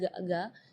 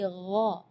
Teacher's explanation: Jadi kalau ga itu dia makhrajnya dari lidah. Ya, tapi kalau huruf ghain itu dari bagian tenggorokan ya.